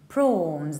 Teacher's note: We say prawns. There is just long O, there is no W. Prawns. In the American accent, you can also say prawns, or you can even say prawns, pronouncing it with A.